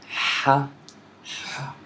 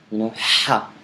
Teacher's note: So it's coming from the throat. So you could say it's double H.